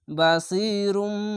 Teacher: তিনটা অক্ষর তিন আলিফ টেনে পড়বেন এবং একটি বিষয় মনে রাখবেন আগে তিন আলিফ টেনে পড়ে তারপরে কলকলা হবে